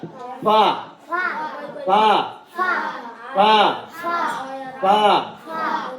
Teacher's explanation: दोनों होठ मिलेगा और अंदर से हवा आएगी